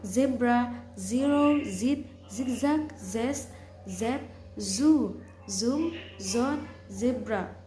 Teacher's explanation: Voiceless alveolar fricative sound S, sim, sin, sin, simple, city, sen, center, set, sec, saw. Voice alveolar fricative sound Z